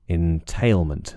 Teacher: entailment and tail is stressed